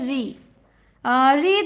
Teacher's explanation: जो ऋ ध्वनि है वो मूर्धन्य है